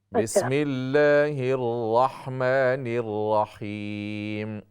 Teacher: را کی تفخیم جو آپ را کو موٹا کر رہے ہیں اس میں واو کی آواز نہ ہو